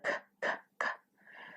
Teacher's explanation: k the only difference is where you pronounce it at so the K is pronounced at the front of your mouth kind of at the roof behind your teeth